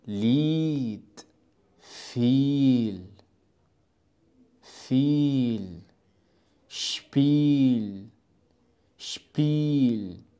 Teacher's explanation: لدينا ايضا مقطع الاي والاي ينطقوا على انهم اي كمقطع طويل